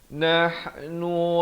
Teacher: ha pedas di pertengahan kerongkong, bukan nah tetapi nah itu ha pedas.